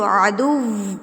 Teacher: वाव नहीं होता, आपके ऊपर वाले दांत जो नीचे वाले होंठ के साथ टच नहीं करेंगे, होंठ बिल्कुल गोल हो जाएंगे लाइक पाउट, जैसे हम पाउट करते हैं तो वैसे आपने अपने होंठों को बिल्कुल गोल कर लेना है, तो फिर वाव की अदायगी करनी है।